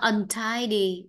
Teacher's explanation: Vậy là huyền ngang huyền. Trọng âm rơi vào âm tiết 2.